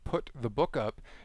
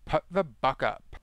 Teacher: So the U vowel in what Eckert describes as petulant drama princess speech often comes out as more of an uh sound. So in the phrase, put the book up, you get something like, put the buck up, or something like that.